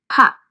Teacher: வாயை மூடிட்டு லிப்ஸ் ரெண்டும் மூடி இருந்து ப சவுண்ட் ஓப்பன் பண்ணுறீங்க